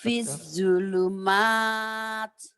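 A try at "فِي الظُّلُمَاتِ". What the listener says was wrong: Nah itu yang saya bilang, ini matobi'inya menjadi pendek. Ketahu Bu kenapa matobi ini pi kasro dengan ya mati matobi. Tapi kenapa tidak dibaca panjang?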